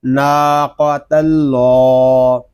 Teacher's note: قاف زبر قا، قاف کو پر پڑھیں گے، ناقا، تا لام زبر تل، ناقا تل، لام کھڑا زبر لا، ناقۃ اللہ۔ یہاں اللہ پاک کے لام کو پر پڑھیں گے کیونکہ اللہ پاک کے لام سے پہلے حرف پر زبر آ رہا ہے